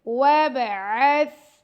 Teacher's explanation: عین کا مخرج گلے کے درمیان سے